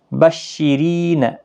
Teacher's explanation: را زیر کی وجہ سے باریک پڑھا جائے گا، ری یا مدہ بھی ہے، ایک الف کی مقدار کے برابر کھینچ کر پڑھیں۔